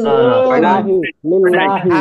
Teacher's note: আল্লাহ শব্দের লামের ডানে জের চিকন করে পড়তে হবে